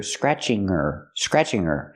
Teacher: pronunciation we hear she's scratching her she scratching her arm remember her is not a stressed word so we don't pronounce the h